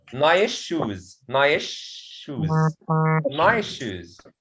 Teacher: I will change the sa sound into sha